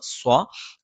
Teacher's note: നാവിന്റെ കൂർത്ത അറ്റത്തിന്െ മുകൾഭാഗം രണ്ടു വരി മുൻപല്ലുകൾക്കിടയിൽ പിന്നിലായിട്ടും നാവിന്റെ മധ്യഭാഗം മുകളിലേക്ക് ഉയരുകയും ചെയ്യുന്ന ഒരു ഉച്ചാരണ രീതിയാണ് സ്വ അതൊരിക്കലും മലയാളത്തിലുള്ള സ്വ അല്ല എന്ന് പ്രത്യേകം ശ്രദ്ധിക്കണം അങ്ങനെ നമ്മൾ ഉച്ചരിക്കുമ്പോൾ